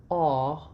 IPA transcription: ɒ